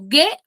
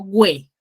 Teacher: Porque la U no suena y yo no resalto la U, solamente resalto la E.